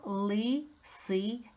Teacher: ц в складі ця звучить м'якенько тому пише дві рисочки це М'який приголосний наприкінці я ми співаємо